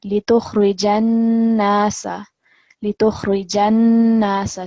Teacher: noon mushaddad, which is a strong nasal sound, a strong gunna sound, because it's a noon with the shadda